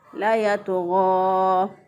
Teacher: लाम को अलग करके पढ़ देते हैं और यतग़ा को अलग पढ़ देते हैं, तो ऐसा करना भी गलत है, क्योंकि इसमें अनजाने में लाम के बाद जो है वो एक अलिफ का इजाफ़ा किया जा रहा होता है, तो ऐसा करना भी गलत है, हराम है।